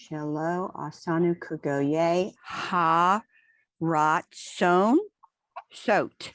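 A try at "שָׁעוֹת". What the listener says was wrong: It's a T at the end.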